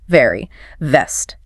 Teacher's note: For V, top teeth gently touch the bottom lip. Air pushes out with voice.